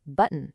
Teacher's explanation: It comes out more like button. It's like that O just kind of shrinks into this tiny little sound. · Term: vowel whisper